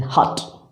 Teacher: but there is no uvular consonants in english it's glottal consonants here the two vocal cords are the active and passive articulators we have only one glottal consonants in english that is her